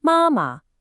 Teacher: High first tone then neutral.